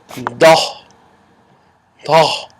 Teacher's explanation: Not Tha as in TH sound, but more of a DH sound.